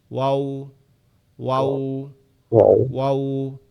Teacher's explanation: ওয়াওটা হচ্ছে আমাদের ঠোঁটটা গোল হয়ে যাবে